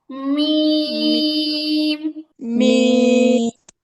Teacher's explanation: মিম উচ্চারিত হয় দুই ঠোঁটের শুকনো জায়গা থেকে। দুই ঠোঁট শুকনো জায়গায় লাগাতে হবে।